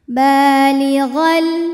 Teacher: ba berharakat fathah panjang cara bacanya adalah panjang dua harakat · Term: Mad Thobi'i, mad tabi'i muqaddar